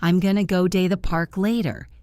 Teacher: Going to became gonna. Go to became go-da.